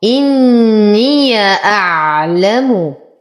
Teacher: نشد النون بغنى أكمل ما تكون